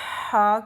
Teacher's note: ہم اس طرح سے ادا کرتے ہیں جیسے ہم کسی کے کان میں سرگوشی کرتے ہیں تو ہماری آواز نہیں ہوتی، صرف خالی ہوا کی آواز نکل رہی ہوتی ہے۔ جیسے آپ خود بھی پریکٹس کریں، کسی کے کان میں جب ہم کوئی بات کر رہے ہوتے ہیں تو ہم آواز نہیں نکالتے، ہم صرف حلق سے ہوا نکالتے ہیں۔ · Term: حقے والا ہا